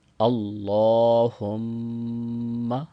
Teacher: میم مشدد کے اوپر غنہ ہوتا ہے، ناک میں آواز لے کے جانی ہے۔